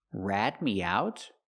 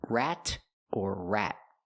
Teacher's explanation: We need a stop t at the end of rat.